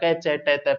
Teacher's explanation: पूरा कै वर्ग कंठों से बोला जाता है, कह कह गई है। पूरा चे वर्ग तालु से बोला जाता है, टे वर्ग मूर्धा से बोला जाता है, ते वर्ग दांत से बोला जाता है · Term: कंठ तालु मूर्धा दंतोष्ट